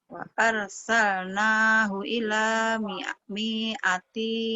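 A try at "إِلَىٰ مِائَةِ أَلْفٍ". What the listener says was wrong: Pendek. Ila mi'ati. Ila mi'ati nggak ada yang panjang. Ini nggak ada yang panjang nih. Karena nggak pasangan.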